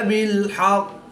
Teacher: قاف حروف قلقلہ میں سے ہے اور جب حروف قلقلہ مشدد ہوں تو ان میں قلقلہ خوب جماؤں کے ساتھ کرتے ہیں، اس کو قلقلہ کبریٰ بھی کہتے ہیں۔ وقف کی حالت میں قاف مشدد کی زیر کو ختم کر دیں گے اور تشدید کو باقی رکھیں گے یعنی قلقلہ بھی کریں گے